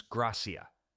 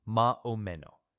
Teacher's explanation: That S at the end of syllables, gone. Gracias becomes gracia.